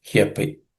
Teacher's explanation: It's made up of 2 words, he and api. He api, e, a becomes ya, so hyapi. Kaunteya purushasya vipaschitaha, no changes.